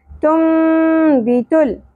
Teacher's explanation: لا ساکن پہ قلقلہ نہیں ہونا چاہیے · ता बारीक होगा, लाम साकिन पे कलकला नहीं होना चाहिए।